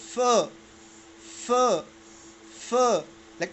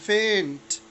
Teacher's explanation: सो ऊपर वाले दो दांत, सनाया उलिया जिसको कहते हैं, अपर टीथ, बिल्कुल सामने वाले, ये जब लोअर लिप में लग जाए, बट अंदर की तरफ, ओके, इनर साइड, जो गीला साइड है, ठीक है, उसमें लग जाए, तो हम प्रोड्यूस करते हैं फ.